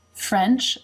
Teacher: the bottom lip moves up to make the F, and the jaw drops for the eh as in bed, but the tongue quickly moves up to make that N